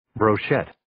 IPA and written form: broʊ'ʃet (Brochette)